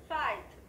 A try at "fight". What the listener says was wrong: Đúng. Fight. Có âm đuôi rõ ràng.